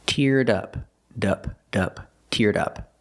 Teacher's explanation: Link the D sound, teared, to the next sound, in up. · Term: Link the sounds